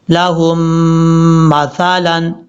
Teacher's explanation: ہا کو شد والی میم کے ساتھ ملائیں گے، پہلی میم کے ساتھ نہیں ملانا، اور یہاں پہ غنہ بھی کریں گے